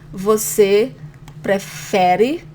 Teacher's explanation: Você prefere, and the emphasis here on the fe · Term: stronger syllable